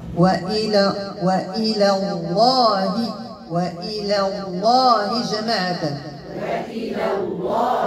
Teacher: اللي قبل منها هنا تجاورت اللام مرققة مع اللام مفخمة إذا نرقق اللام الأولى عاد ندوز اللام الثانية ونفخمها